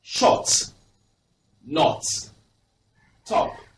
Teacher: Now this is the short O. Your mouth is quite rounded.